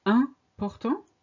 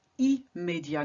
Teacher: Important starts with the sound un. Immédiat starts with the sound im.